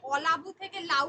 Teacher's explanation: আদি স্বরলোপ মানে শব্দের আদিতে যখন স্বরধ্বনিটা লুপ্ত হয়ে যাচ্ছে অলা আছে লুপ্ত হয়ে গিয়ে হচ্ছে লাউ এখানে আর নেই দেখেছো